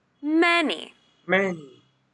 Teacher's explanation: remember the stress is on the first syllable